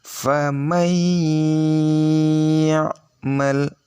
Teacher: Ini cara membacanya famay ya'mal, mendengungnya di ya-nya, nun sukunnya hampir tak terdengar.